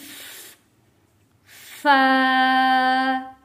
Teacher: जब हम फा को पढ़ेंगे तो हमारा जो ऊपर वाले दांत हैं वो नीचे वाले होंठों के साथ आकर मिलकर पढ़ा जाएगा और आवाज आएगी फा।